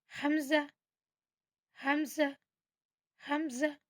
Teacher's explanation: जब हम इसको पढ़ते हैं ना तो ये हमारे सीने की तरफ से इसका साउंड आता है। · جب ہم اس کو پڑھتے ہیں نا تو یہ ہمارے سینے کی طرف سے اس کا ساؤنڈ آتا ہے، حمزہ، حمزہ، حمزہ، ٹھیک ہے، حمزہ، اور ہا، ہا، ہا، ہا، اس طرح سے اسے پریکٹس کرنی ہے۔